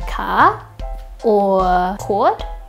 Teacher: We don't pronounce our R's in most cases